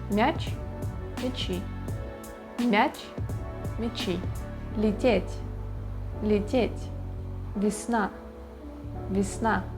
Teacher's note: If it's е or я in unstressed position It becomes closer to и